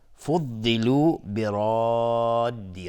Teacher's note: را اینجا تفخیم هست چون فتحه داره، الف هم تابع را تفخیم میشه. و مدی که در برادی هست مد لازم کلمی مثقل.